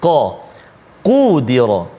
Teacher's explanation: Qaf ni hujung lidah, dia pangkal lidah dekat dengan anak, bukan anak sulung, anak tekak. Dekat dengan anak tekak ujung belakang, dekat dengan anak tekak.